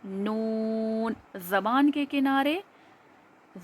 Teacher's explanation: زبان کے کنارے سامنے کے دانتوں کی جڑوں میں جب لگتے ہیں تو نون ادا ہوتا ہے